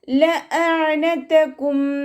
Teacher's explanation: ലഅനതകും ഹംസയെ clear ആക്കി കൊടുക്കുക കേട്ടോ. അയനിൻ്റെ സൗണ്ട് തൊണ്ടയുടെ മധ്യഭാഗത്ത് തന്നെ കൊണ്ടുവരാനും ശ്രദ്ധിക്കുക. ഹംസയുടെ സൗണ്ടായി പോകരുത്.